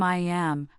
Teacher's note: Similarly, I am can become I am with a sound gliding between the two vowels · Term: linking